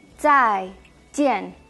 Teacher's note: Zai, esa Z que suena como TS, zai. Y jian, la J como una CH sin tanto aire